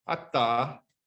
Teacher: And this one, there's maybe a little, you can maybe see a little tiny bit of voicing before the release, but basically the voicing and the release are starting at the same time. So we say this one has 0 voice onset time, or it's voiceless.